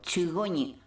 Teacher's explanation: cuando la vocal cae, la oclusiva glotal que queda se escucha bastante bien